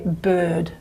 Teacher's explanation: the tongue is quite forward, front, okay? And the lips are a bit rounded for most people